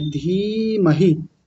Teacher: पहले दीर्घ इकार फिर ह्रस्व इकार · पहली वाली को लंबा खींचेंगे और दूसरी वाली को थोड़ा जल्दी बोलेंगे